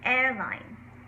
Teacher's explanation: Now you want a little bit of a hint of an R in there. You don't want to overpronounce the R or say airline, or not pronounce it at all and say airline.